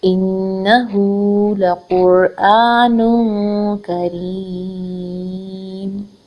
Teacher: را کے نیچے زیر ہے، اس کو ہم نے باریک پڑھنا ہے۔